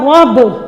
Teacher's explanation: اسی لفظ میں دیکھیں را کے اوپر کیا ہے، زبر، را کو ہم موٹا پڑھیں گے، ٹھیک ہے، را کے نیچے اگر زیر ہوتی تو اس کو باریک پڑھنا تھا، زبر ہے اور پیش ہو تو ہم اس کو موٹا پڑھیں گے